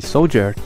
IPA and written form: ˈsoʊl.dʒɚ (soldier)